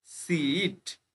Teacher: এই ই এ বা double ই তে কিন্তু দীর্ঘই উচ্চারণ হয়। ঠিক আছে, কি উচ্চারণ হয়, দীর্ঘই।